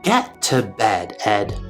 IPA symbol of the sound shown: ɛ